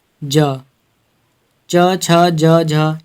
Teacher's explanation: ये सभी हमारे स्पर्श संघर्षी व्यंजन हैं